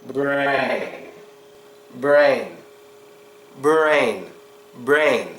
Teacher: when the r sound follows a consonant well we pronounce it just as we do when it's in the beginning of a word only difference here is we do not protrude the lips · Strong R sound, but no protruding of the lips.